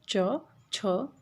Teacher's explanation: च वर्ग जो होता है वो तालव्य से उच्चारित होता है